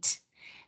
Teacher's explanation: you're not adding the schwa, which is a sound, to the end of your phoneme